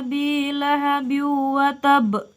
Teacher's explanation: terdapat Qalqalah kubra dengan pantulan yang kuat atau besar watab terjadi karena salah satu huruf Qalqalah wakaf atau berhenti dibaca